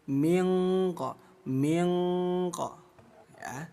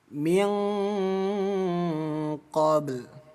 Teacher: Bunyi nun dirubah menjadi bunyi eng. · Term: ikhfa